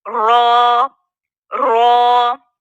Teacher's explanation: رو کہاں سے ادا ہو رہا ہے؟ مسوڑوں سے، دانتوں کے مسوڑوں سے ادا ہو رہا ہے. زبان کی پشت، نوک سے تھوڑا سا جو آگے والا حصہ ہوتا ہے نا، اس کو پشت کہتے ہیں.